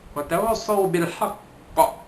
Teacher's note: bunyinya itu ialah qalqalah asyaddu kubra, kerana huruf qaf itu huruf qalqalah